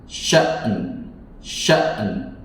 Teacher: hamzah di pangkal tenggorokan dan suaranya tertahan. Syiddah.